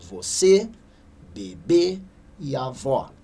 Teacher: Mas percebemos que a última sílaba é a sílaba tônica, é a sílaba mais forte